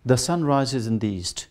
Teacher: in statement it is falling